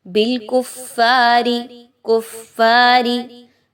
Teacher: را کے نیچے زیر ہے اس را کو باریک پڑھیں گے